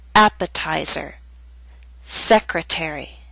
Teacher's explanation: secretary are longer words they have both primary and secondary stress primary stress is at the beginning of these words but the T still falls on a stressed syllable its secondary stress